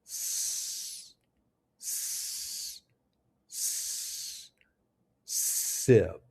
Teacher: This is a voiceless, hissing sound with no vibration in your throat. To make this sound, your mouth should be slightly open with your teeth close together. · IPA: /s/